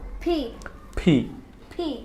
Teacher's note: উপরের ঠোঁট নিচের ঠোঁট লেগে একটা ধাক্কা হবে